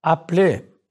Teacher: Note how the e instable is not pronounced.